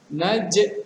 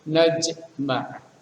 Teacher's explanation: Hukumnya adalah qalqalah. Karena sukunnya sukun asli, maka itu adalah qalqalah sughra. Pantulannya tidak terlalu kuat.